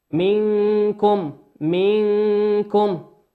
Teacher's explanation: النون في منكم نون ساكنة أتى بعد حرف الكاف، والكاف من حروف الإخفاء